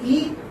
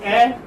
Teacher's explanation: For instance, when you say E, it is closed, and when you say A, it's open.